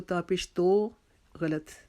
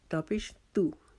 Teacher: تا کو ہم زبان کی نوک اوپر والے دو دانتوں کی جڑ کے ساتھ لگا کر تا کو باریک کریں گے، اپنے ہونٹوں کو اسمائلنگ پوزیشن میں کریں گے۔ تا کو باریک ادا کریں گے۔ تا پیش تو، اس کو تا پیش تو غلط، تا پیش تو غلط، لمبا ہو گیا۔